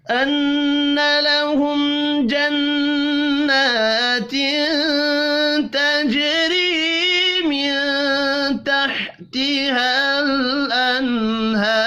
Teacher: تجری جیم ساکن قلقلے کے ساتھ پڑھیں گے. را کو زیر کی وجہ سے باریک پڑھیں گے